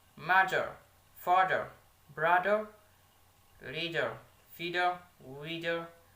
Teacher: a voiced dental fricative sound